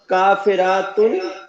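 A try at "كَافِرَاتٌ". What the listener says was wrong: नहीं काफिरातुन नहीं करें, खींचे नहीं।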